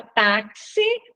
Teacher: na palavra táxi o X tem som de KS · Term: dífono